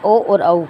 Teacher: इसी तरह कंठोष्ठ का, कंठ और ओष्ठ दोनों से ओ और औ कंठोष्ठ्य बोला जाता है